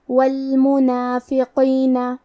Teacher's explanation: کلمت المنافقین میں حرف القاف ہے. قاف کی ادائیگی زبان کے جڑ اور تالو کے نرم حصے سے ہے. قاف حروف تفخیم میں سے ہے تو ہم یہ حرف کو موٹی آواز میں پڑھیں گے